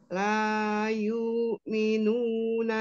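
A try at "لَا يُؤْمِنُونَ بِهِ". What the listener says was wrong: yuk afwan langsung ditekan di hamzahnya ya. La yuk minu nabihi yuk ya, tidak diayun langsung diputus.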